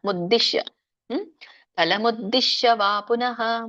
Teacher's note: ಮುದ್ದಿ ಇದಕ್ಕೆ ದವತ್ತಿದೆ ಬಟ್ ಮಹಾಪ್ರಾಣ ಇಲ್ಲ. ಮುದ್ದಿಶ್ಯ ಫಲಮುದ್ದಿಶ್ಯ ವಾ ಪುನಃ, ಎಳಿಬೇಡಿ, ಪುನಃ ಪುನಃ ಅಷ್ಟೇ.